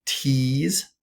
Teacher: So starts with a T and ends with a Z. So for the starting with the high front E, we would have the word tease